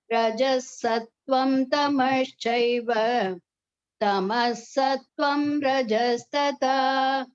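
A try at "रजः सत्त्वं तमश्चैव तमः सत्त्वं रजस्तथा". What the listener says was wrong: Everything, the pronunciation pace, everything was good except the Mahapranaha. You have to watch out for the Mahapranaha pronunciation. Rajasattvam Tamaschaiva Tamasattvam Rajastatha. The last tha is Mahapranaha. You have to watch out for that. change Mahapranaha to Alpapranaha, there are sometimes the meaning completely changes.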